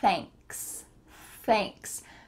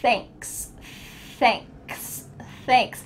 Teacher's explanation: when you say the TH your tongue is between your teeth, and you're also feeling a little stream of air coming out.